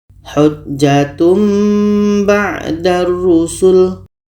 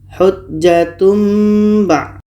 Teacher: Dan pun kita sudah terbantu dengan adanya mim. Maknanya bunyi tanwin kita tukar kepada mim dan kita dengungkan. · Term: iklab